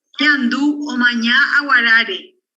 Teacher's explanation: Y en aguarare, acá encontramos sí una buena alineamiento de sílabas con tonos, alto el primero, bajo la segunda sílaba y un tono alto reducido sobre la tercera sílaba tónica. Y termina la oración con un tono bajo, típico del final de una afirmativa.